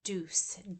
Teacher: Deuce is right there on that alveolar ridge, so that's fronting.